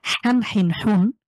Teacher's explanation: যেহেতু হা কণ্ঠবর্ণ, কণ্ঠ থেকে উচ্চারিত হবে। মাখরাজ সেম থাকবে।